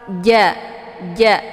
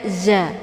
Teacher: Jadi tengah lidah itu terangkat menempel ke langit. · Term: huruf ja